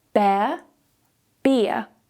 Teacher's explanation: Notice as well that I don't pronounce the R at the end of these words.